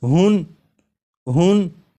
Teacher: جب ہا کو پڑھیں گے تو آخر میں نون ساکن کی آواز آئے گی ، جیسے ہن ہن، تو نون ساکن اور تنوین کی جو